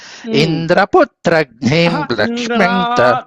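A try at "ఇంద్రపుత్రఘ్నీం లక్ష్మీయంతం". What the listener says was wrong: దీర్ఘం.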